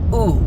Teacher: the vav is actually going to convert to a shuruk and sound like ooh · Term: boom-off rule